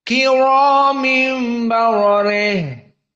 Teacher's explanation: Baro dalam keadaan fathah berarti tafkhim, re dalam keadaan muraqqaqah.